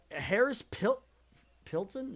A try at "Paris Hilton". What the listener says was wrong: Paris Hilton. I think you mixed up the first letter of both of those names. Swapped them. Yeah, you said Harris Pilton.